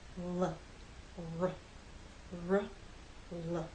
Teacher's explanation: The sides of your tongue are down for L, the sides of your tongue are more up for R. The lips are more rounded for R. They're more relaxed with L.